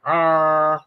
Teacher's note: if you're doing a kermit frog impression it's uh an adenoidal voice